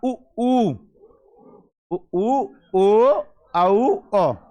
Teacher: इनको आप बोलोगे तो हमारे जो ओंठों की आकृति रहेगी वो कैसी रहेगी? वृत्ताकार। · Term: व्रतमुखी